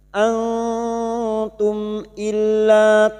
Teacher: mim sukun dibaca jelas tanpa dengung